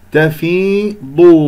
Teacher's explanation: الضاد هنا مفخمة مرتبة ثالثة لأنها مضمومة